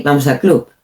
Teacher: the B, it's not such a strong B. It's not like the B of Barcelona.